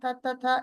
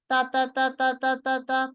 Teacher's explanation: তো আসলে যখন হারাকা থাকবে তখন কোনো হুইসপারিং হবে না, কোনো বাতাস বেরোবে না।